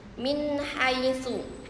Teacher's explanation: terdapat nun sukun bertemu dengan huruf ha yang dibacanya dengan jelas tanpa mendengung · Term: izhar halqi